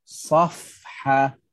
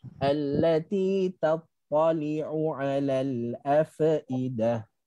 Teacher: apabila kita nak sebut fa yang mati, maka di sana ada hams dan rohawah, lepasan angin dan suara.